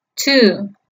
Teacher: es como si se pronunciara dos veces esa misma vocal en este caso se pronunciaría dos veces la u entonces la pronunciación correcta del número dos en inglés es two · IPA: /tuː/